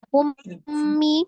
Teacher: Ya di idgham kan bacanya di gunnahkan. Idgham mimi disertai dengan gunnah ya. Dia gunnahkan.